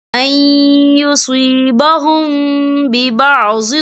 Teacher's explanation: تو یہاں پر اخفا شفوی ہوگا اور ہم یہاں غنہ بھی کریں گے